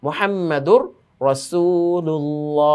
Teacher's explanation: এই যে দালের উপরে তানবিন, তানবিনের পরে র এসেছে, যেই রটা নুন সাকিনের গুন্নাহ ছাড়া ইদগামের একটি উদাহরণ